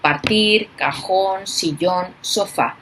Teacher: se carga en la última sílaba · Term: agudas